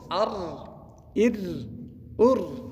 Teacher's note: ګوره دغه زور چې د مخه دی د را، پیش چې د مخه دی د را، دا ډکه ویل کېږي